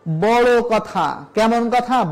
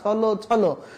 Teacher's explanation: বিশেষণে অথবা বিশেষণ রূপে ব্যবহৃত শব্দের অন্তিমে ওকার উচ্চারিত হয়।